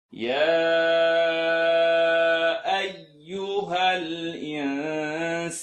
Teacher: Nun Sukun followed by Sin, tongue not touch.